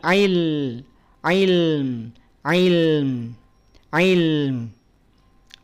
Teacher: lamnya alirkan sedikit ya dia punya sifat yang namanya tawasud